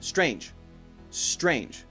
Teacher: strange make sure you say just a J sound and nothing else don't add an ER I've heard a couple people add doctor stranger stranger with an extra sound after it strange should be a one syllable word not a two syllable word